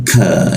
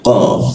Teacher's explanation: Kalau ka lidahnya diturunkan, ujung bagian belakang lidahnya itu diturunkan. Kalau qa dinaikkan, ya, jadi qa, udara tidak keluar.